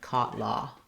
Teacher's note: it's a mid-back rounded vowel, and the symbol for it is this.